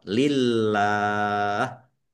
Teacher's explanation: Kemudian Allahnya dibaca tipis karena harakat di depannya kasrah